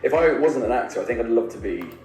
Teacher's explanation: Be is the main stress here. I is the secondary.